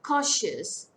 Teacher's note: Cautious. Two-syllable word. Stress falls on the first syllable.